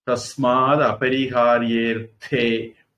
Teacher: அந்த ஏக்குள்ள அந்த ஆ ஒடுங்கிடும், சேர்ந்துடும்.